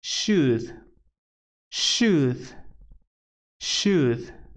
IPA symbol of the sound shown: ʃ